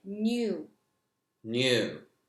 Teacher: you add a Y after the N when you're pronouncing it